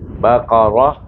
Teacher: mati dengan ha, bukan dengan ta, dengan ha. Jadi bunyinya Baqarah.